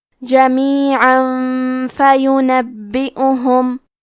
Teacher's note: یبعثہم اللہ، کلمت جمیعاً کے آخری میں عین پہ تنوین زبر ہے، پھر حرف الفاء آتا ہے کلمت فینبئہم، فا حروف الاخفاء میں سے ہے تو ہم یہ حکم کو غنہ کے ساتھ ادا کریں گے